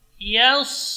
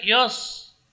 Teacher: Jadi ya tidak boleh tebal karena pengaruh huruf shad. Tetap ya dibaca tipis.